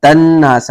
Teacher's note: نون مشدد ہے, غنہ واجب ہوگا